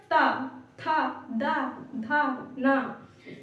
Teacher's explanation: मतलब दांत आप बोल के देखिए, दांत के निकट से बोले जाते हैं। पूरा तो आपका दांत नहीं लगेगा, दांत के बिल्कुल निकट से बोले जाते हैं।